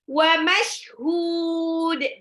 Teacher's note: tanwin ketemu waw idgham bil gunnah dilebur tapi ditahan